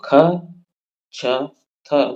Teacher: महाप्राण में अधिक हवा निकलती है, यह बात जो है सत्य है, परंतु ख, छ, थ जैसे महाप्राण अघोष हैं, इस कारण असत्य है।